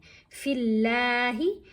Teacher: अब लाम को हमने बारीक पढ़ना लाम को मोटा नहीं पढ़ना · یہاں پر فا کے نیچے زیر ہے تو اب ہم نے لام کو باریک پڑھنا ہے